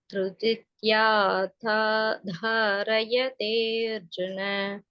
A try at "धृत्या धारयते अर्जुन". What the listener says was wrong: Second சரணம் திருத்தித்யா இல்ல, திருப்தியா தாரயதே அர்ஜுன.